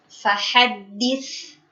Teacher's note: sifat al-hamas, yaitu mengalirnya nafas, pada baris kedua di kata al-mabthus, itu disempurnakan.